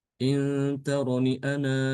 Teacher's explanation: kalau dia diwakafkan di sini, wakaf berhenti pada kata ana, maka dia alifnya muncul.